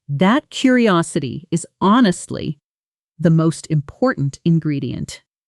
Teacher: Let your voice fall gently and warmly on ingredient, the way a supportive friend would say it to you.